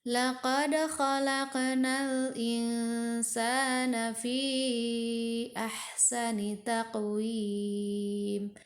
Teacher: laqad harus dipantulkan huruf dalnya karena dal termasuk huruf qalqalah. Jadi harus dipantulkan.